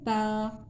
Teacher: تا کی آواز باریک ہوتی ہے، جیسے بچے بولتے ہیں نا تا، ایسے ہوتی ہے